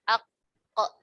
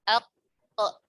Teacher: Pangkal lidah bertemu dengan langit-langit yang lunak.